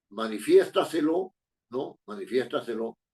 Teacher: Que son las llamadas sobreesdrújulas, ¿no? Que llevan la fuerza de voz en la anterior a la antepenúltima, en la anterior a la antepenúltima.